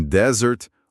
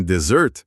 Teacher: Em desert, o deserto, a força tá na primeira sílaba. Em desert, a sobremesa, o stress vai lá pra última.